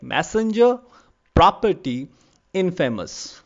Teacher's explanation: Okay, so three syllables are there and the first is stressed, the remaining two are unstressed. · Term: dactyl